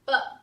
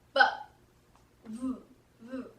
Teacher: the V, I do not use both my lips. I only use my lower lip and my teeth to make the sound.